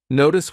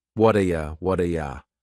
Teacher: That T at the end of the word what is going to change to a D sound. This is really typical of American English, where a T that's surrounded by vowel sounds is going to change to a D. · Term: flapped T